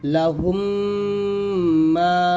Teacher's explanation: তো এখানে দেখুন প্রত্যেকটাই মিম সাকিনের পর মিম আসছে, মিম সাকিনের পর মিম, মিম সাকিনের পর মিম, মিম সাকিনের পর মিম। তো মিম সাকিনের পর প্রত্যেকটা জায়গায় মিম আসার কারণে আমরা কিন্তু গুন্না আদায় করে পড়তেছি